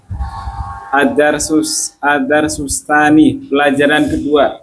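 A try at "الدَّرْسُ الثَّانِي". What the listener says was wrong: Iya, pintar.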